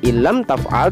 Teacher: Bunyi nun sukun menjadi satu dengan lam dalam kata in lam.